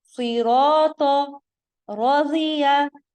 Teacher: زیر میں زیر کی آواز باریک ہوگی لیکن جو حرف ہے اس کی ادائیگی موٹی ہوگی